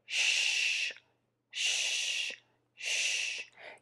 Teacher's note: my lips are rounded and puckered, and air is moving out of my mouth